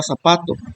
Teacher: la sílaba sa es la que se pronuncia se escucha más fuerte que las demás sílabas que conforman la palabra por lo tanto sa es la sílaba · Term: sílaba tónica